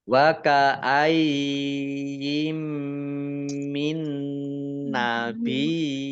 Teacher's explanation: mim tasdid dibaca mendengung atau gunah ditahan dua harakat